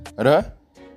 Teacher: vibrante simples, produzido por meio de um curto toque entre os articuladores, ou vibrantes múltiplas, produzidas através de vibrações de um dos órgãos articuladores do sistema vocal contra outro.